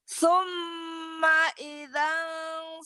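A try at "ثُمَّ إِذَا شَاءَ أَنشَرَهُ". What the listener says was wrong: Jangan idang karena nggak ada tanwin. Ida matobi'i. Kalau yang atas tadi idang. Ini ida ya. Summa ida sya'a angsyarah. Summa idza sya'a ansyarah.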